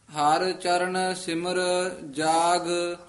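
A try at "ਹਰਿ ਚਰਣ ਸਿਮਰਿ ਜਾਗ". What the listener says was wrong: हर चरण सिमर इथे ठमक ला देनी है। जाग सिमर जाग नहीं कहना। हर चरण सिमर जाग।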